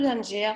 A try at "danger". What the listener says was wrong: Donc, tu sais, danger, on ne prononce pas le R. Ouais, danger.